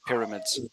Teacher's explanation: you stressed mids but you need to stress the first syllable pyramids like that pyramids you need to stress the first one